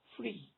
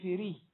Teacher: For example, in the word free, you can see that the consonants F and R form a cluster because we have to pronounce them without a vowel between them. We have to say F rather than fir, for instance. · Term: consonant cluster